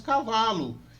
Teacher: Isso chama-se alçamento, ou seja, ele alça a vogal O para U.